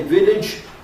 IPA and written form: ˈvɪlɪʤ (village)